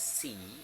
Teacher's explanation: Voicing is voiceless. Place is alveolar. Manner is fricative.